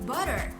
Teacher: In American accent, we say T in the middle as D